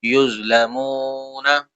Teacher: یہ زو موٹا کریں گے حروف مستعلیہ میں سے، میم واو پیش میں واو مدہ، اس کو کھینچیں گے، یظلمون۔